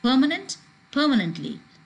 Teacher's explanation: permanently this the place of uh that stress does not change it remains on that first syllable that is per